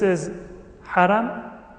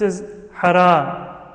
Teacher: the short and long vowels the difference between them is not in the quality of the vowel but it is in the length of the vowel so it's not a different sound it's the same sound but